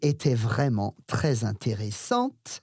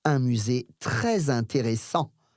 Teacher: You can hear me saying the T at the end because there's an E.